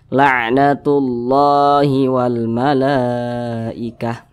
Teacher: Ini ada alif kecil yang berdiri di atas kalimat Allah ini, maka kalimat Allah dibaca panjang. Mad tabi'i panjangnya 2 harokat atau kira-kira 2 ketukan